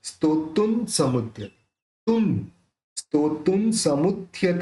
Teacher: अब यहाँ पे जो बिंदी है तुन, उसके बाद स है, तो स बोलते समय दोनों होठ मिलेंगे नहीं, तो न निकलेगा